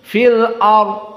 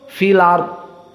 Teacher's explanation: hamzahnya hilang Tidak ada sentuhan Hamzah sama sekali filar namun alamatnya ARD itu masih ada fathah dipindahkan kepada lam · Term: naqel